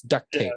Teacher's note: That T is somewhat silent because you hit the tape